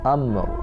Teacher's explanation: Matikan huruf mim, bangkitkan huruf ra dengan suara rendah.